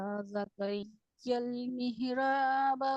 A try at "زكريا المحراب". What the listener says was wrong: نہیں یہ لفظ صحیح نہیں آ رہا ہے, یہیں سے پڑھیں گے. زکریل, تھوڑا شدت سے سختی سے پڑھیے نا, تشدید والا حروف ہے. ریل ریل ریل ریل. نہیں نکل پا رہا ہے.